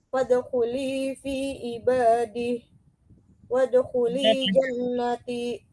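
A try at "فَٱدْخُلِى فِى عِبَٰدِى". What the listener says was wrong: D-nya panjang. Fadkhuli fi ibadi.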